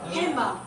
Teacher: do not pronounce the D in handbag. So the D, they don't pronounce it D. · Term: deletion